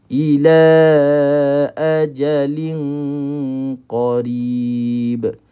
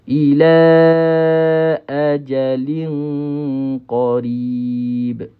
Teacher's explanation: Tapi ikhfad hakiki qaf ini kita kena rapatkan pangkal lidah kita kepada huruf qaf